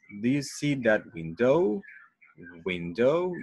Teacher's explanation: Window, do you feel this bump, this little bump here? Because in this word, the stress goes in window, but we also have to go up in the final O, the final diphthong